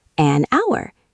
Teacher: H is silent. Sounds like ow.